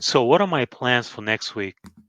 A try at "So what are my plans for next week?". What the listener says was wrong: Next week, you're stressing next. So if you take off that stress on next, you're just able to really expand your lower pitches. So what are my plans for next week? See how much lower I can go? Plans for next week.